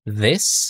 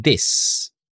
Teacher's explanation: Okay, so dinadagdagan natin ng I, snake, instead of snake. Voice TH, pinapalitan natin ng letter D.